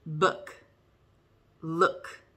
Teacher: your tongue's up in the back and it's short and it's high